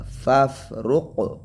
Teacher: فف جب فا کو بولا ہم نے، فا ساکن ہے، جب فا کو بولا تو قلقلہ نہیں کیا لیکن قاف پہ قلقلہ کیا